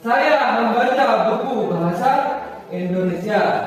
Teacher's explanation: Pada kalimat di atas yang ditekankan adalah kata saya.